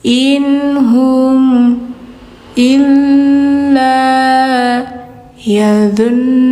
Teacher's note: Nah ini nun di sini harus dengung ya, karena guna musyaddada.